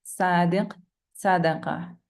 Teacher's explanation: صاد is pronounced when the air is passed through the space between the tongue and the inner plates, and the tongue will be curved.